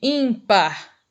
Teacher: Então a sílaba mais forte é o in. Então se você contar, ó, de trás para frente, primeira, segunda sílaba. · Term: paroxítona